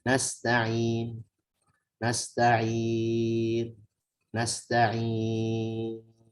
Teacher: Hanya isyarat tanpa ada suara yang keluar dari lisan kita. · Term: ismam